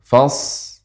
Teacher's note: shad ketika dia disukunkan, dia termasuk huruf yang tajam, sehingga ketika sukun tetap dia mengalir.